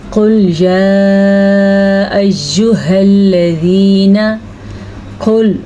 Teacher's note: قل موٹا قاف اور مد کا بھی آپ نے دھیان رکھنا ہے